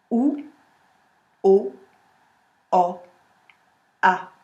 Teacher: Et le A se trouve derrière les dents. Si vous ne le mettez pas derrière les dents, il va partir au fond, vous allez avoir un A.